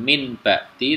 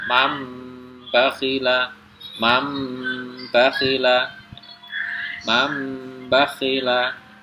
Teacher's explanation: Jadi suara nun sukun atau tanwin itu ditukar menjadi suara mim sukun, kemudian mendengung dengan panjang 2 harokat atau 1 ayunan. Jadi sekali lagi caranya adalah dengan membaca nun sukun atau tanwin itu ditukar, suaranya ditukar menjadi suara mim sukun dengan mendengung 2 harokat. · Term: iklab